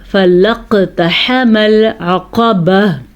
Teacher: فَلَقْتَحَمَ الْعَقَبَةَ، قاف کو موٹا کر کے پڑھیں گے کیونکہ قاف حروف مستعلیہ میں سے ہے اور قاف کے اوپر قلقلہ ہوگا کیونکہ قاف حروف قلقلہ میں بھی ہے